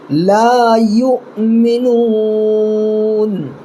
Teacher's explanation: یہاں پر دیکھیے حمزہ اوپر ہے، نیچے واو ہے، سب سے اوپر ساکن ہے نا، تو یہ واو نہیں پڑھا جائے گا، صرف حمزہ پڑھیں گے اور یہاں پر جھٹکا لگانا ہے